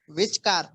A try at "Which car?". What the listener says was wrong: Which car एक साथ मत बोलो. Which पर accent दो. Which car?